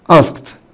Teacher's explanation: بعد الكه ساوند الإي دي بتنطق تاء